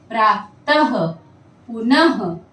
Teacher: उदाहरण के लिए देखिए कुछ शब्द, जैसे कि प्रातः, पुनः, ये इसके उदाहरण हैं। जब भी हम विसर्ग का उच्चारण करते हैं तो हमारे कंठ से श्वास बाहर जाती है।